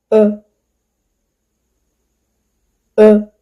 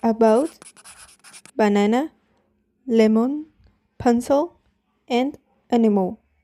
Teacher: This sound /ə/ is called schwa. It is a mid-central vowel and the lips are unrounded. The mouth is relaxed and this sound usually appears in unstressed syllable.